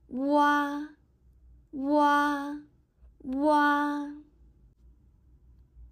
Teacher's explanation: This is a rising compound. This sound can be firstly produced by pronouncing the simple vowel u, and then followed by another simple vowel a.